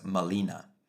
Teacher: She was baptized as Marina, but the Nawat speaking people had no R sound of their own, saying it first as Molina